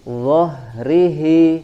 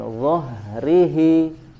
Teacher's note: huruf H mengalirkan suara dan juga nafas, ya, ketika dibaca di makhrajnya dengan harokat sukun